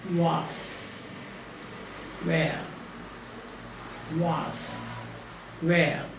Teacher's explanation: actually it begins like as though you are going to say ooh and then you make a change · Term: round your lips